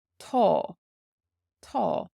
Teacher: the fada here has an aw sound, it's long. aw.